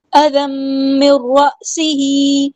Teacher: تنوین کے بعد میم آیا ہے تو ادغام کرتے ہوئے 2 کاؤنٹس ہم نے رکنا ہے ، ادغام مع الغنہ، ذال کو باریک نرمی سے داغنا، اذم